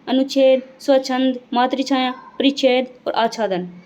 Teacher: ह्रस्व स्वर के बाद में छ आता है तो छ से पहले च का आगमन हो जाता है।